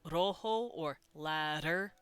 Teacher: that tap of your tongue on the top of your mouth